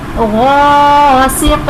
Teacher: غین اور قاف حروف مصطلیہ ہیں اس لیے ان دونوں حروف کو پر یعنی موٹا پڑھیں گے